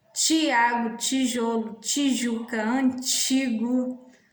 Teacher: diante da vogal I, não tem pronúncia linguodental, e sim uma pronúncia palatal, que podemos representar como T.